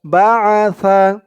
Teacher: সার উচ্চারণটা একদম নরম পাতলা হবে জিহ্বার মাথা উপরের দাঁতের মাথার সাথে লাগবে